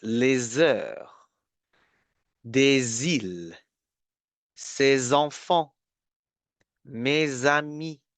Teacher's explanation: the last S is silent, but you need to make a link